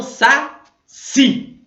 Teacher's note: A sílaba tônica é o si.